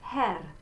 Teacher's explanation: So this in the word Herr, this is what we call the open E, and this is like in our English word bed, Herr. So it's not the closed one that you're going to see in a minute, which is E, but it's Herr. · that R at the end of Herr, I'm just going to flip it a little bit and be done with it. It's not a long R, no.